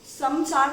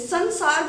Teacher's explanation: तो जैसे समसार तो नहीं बोलते हैं, हम जब बोलते हैं कैसे बोलते हैं, संसार बोलते हैं, लेकिन जब हम संधि करते हैं तो कैसे लिखते हैं, सम जमा सार। तो जो म होता है वो अनुस्वार में बदल जाता है, मतलब उसकी साउंड जो है वो न की हो जाती है।